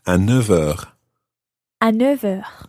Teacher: the F of neuf, becomes more like a V when you're following it on with something else.